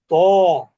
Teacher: ত উচ্চারণে কি হবে, জিহ্বার মধ্যভাগ ফুলে যাবে। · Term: মোটা এবং উঁচু ধ্বনি